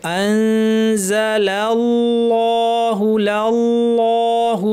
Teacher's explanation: প্রথম লামটা পাতলা কিন্তু আল্লাহ লামটা ভারি থাকবে